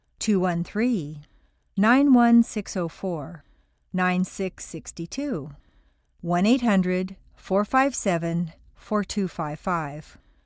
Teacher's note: There's a distinct stress and rhythm pattern to both spelling and numbers, usually in groups of 3 or 4 letters or numbers, with the stress falling on the last member of the group.